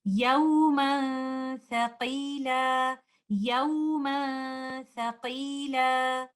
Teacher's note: Since Tha is a light letter, the sound of Gunna will be light. We will hide the Noon Sakina by not touching the tip of the tongue with the roof of the mouth. We will only give the gunna. We will hold the gunna for some time and recite it like this. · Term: ikhfa